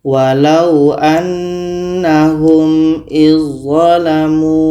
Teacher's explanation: Kita baca walau annahum izzalamu. Bunyi dzal sudah sempurna masuk ke dha. Dzal tidak kita baca lagi. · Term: idgham kamil